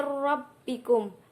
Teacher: Dan selanjutnya ada mir rabbikum, nun sukun bertemu dengan huruf ra, yaitu bacaan idgham bila ghunah. Nun sukun lebur ke dalam huruf selanjutnya, yaitu ra, dan tidak mendengung.